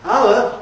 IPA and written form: ˋaʊə (hour)